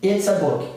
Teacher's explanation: It is, se eu tiver separado, porque o T está entre vogais, mas eu contraí e ficou it's. Eu vou emendar esse S, ó. It's a book, correto?